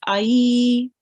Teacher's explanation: And what you do, you join on the letter with the fatha onto the ya really softly, and then you prolong it. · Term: ya lean